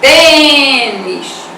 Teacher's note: A palavrinha tênis, 2 sílabas, você também vai acentuar a penúltima sílaba. E a vogal E, fechando o som da vogal E.